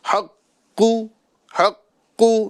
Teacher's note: مشدد پر جب ہم وقف کریں گے تو تشدید باقی رکھیں گے، حرکت کو نہیں پڑھیں گے · آخری میں جو پیش ہے یہ ظاہر نہیں کریں گے، چونکہ ہم اس کو ساکن کر رہے ہیں